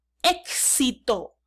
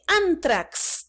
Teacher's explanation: Suena así, una K y luego una S. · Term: grupo bifonemático